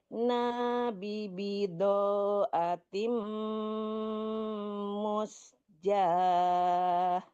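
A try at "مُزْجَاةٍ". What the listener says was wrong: Jangan mus tapi muz. Muz.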